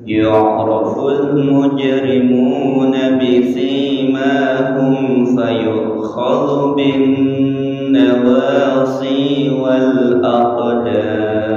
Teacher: hati-hati pada bisimahum, itu sinya panjang, manya panjang